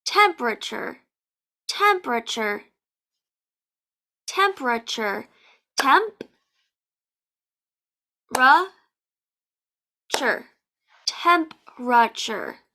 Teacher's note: The T-U-R-E in English makes the chur sound.